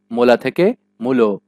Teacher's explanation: শুধু লা চেঞ্জ হয়ে গিয়েছে লো। এখানে প্রথম মু এর প্রভাবে পরের লা চেঞ্জ হয়ে লো হয়ে গিয়েছে। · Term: প্রগত স্বরসঙ্গতি